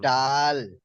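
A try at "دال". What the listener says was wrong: হ্যাঁ, ডাল নয়। দেখেন এখানে ড লেখা নেই, বাংলায় দ লেখা আছে, দাল।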